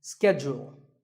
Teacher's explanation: In American English, this is schedule. The first syllable is ske and the second is jewel, schedule. In British English, it can be both schedule or schedule.